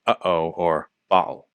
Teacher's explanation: That's a closure of the air flow at the glottis. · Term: glottal stop